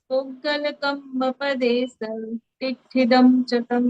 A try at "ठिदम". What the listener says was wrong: टिट्ठिदम, टिट्ठिदम तो आप बोलो टिट्ठिदम, तो उसमें टी पूरा हो गया आपका, और टिट्ठिदम में आपकी इकार वो हो गई आपकी दीर्घ, लेकिन यहाँ रस्व है, थिदम।